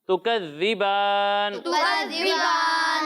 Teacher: ذال میں سیٹی کی آواز نہیں آئے گی، اور یہاں مد عارض ہے تو اسے ہم 1، 2 یا پھر 3 الف تک کھینچ کر پڑھیں گے.